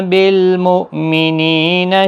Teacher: حمزہ ساکن کو جھٹکے کے ساتھ پڑھیں۔ نی یا مدہ ہے، 1 الف کی مقدار کے برابر کھینچ کر پڑھیں۔